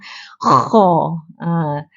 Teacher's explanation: Kena hembus macam nak meludah, macam nak buang kahak tu.